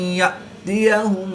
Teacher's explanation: حمزہ ساکن ہے جس کو جھٹکا دے کر پڑھیں گے